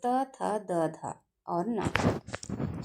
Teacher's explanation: दंस्त यानी कि जब हम बोलते हैं तो अंदर भी दबाव जाता है और दांतों से भी हमारी जिह्वा टकराती है बोलते वक्त। तो त, थ, द, ध और न।